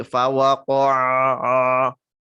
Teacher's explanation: Tapi tetap dijaga ya, fawaqa'a, fa tipis, waw tipis, qol tebal, ain tipis. Ini kadang suka menebal yaitu huruf waw sama ain.